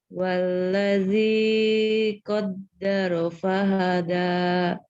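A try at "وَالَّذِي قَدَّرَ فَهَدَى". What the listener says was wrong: Nah, gitu ya ketukannya ya.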